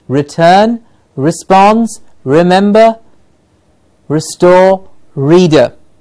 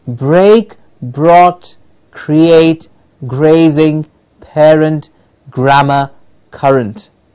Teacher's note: The only thing that we are saying is it is not a flappy, a sort of vibrating r, r. The r that we produce in English, the tongue does not touch anywhere in the mouth.